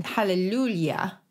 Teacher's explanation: The J in jam is kind of phonetically the same as the soft G, isn't it, in general? And then the J sound that you hear in hallelujah is pronounced like a Y